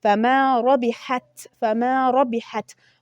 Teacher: فما ربحت را تفخیم ادا کیږي یعنې ډکه